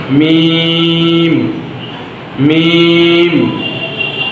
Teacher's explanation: ঠোঁট চাপা থেকে চেপে যাবে, মানে ফাঁকা থেকে চেপে যাবে